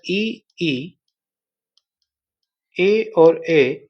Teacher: ये अग्र स्वर है क्योंकि ये जीभ के आगे वाले भाग का इस्तेमाल होता है इनको उच्चारण करने में